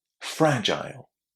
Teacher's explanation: So fragile is stressed on the first syllable.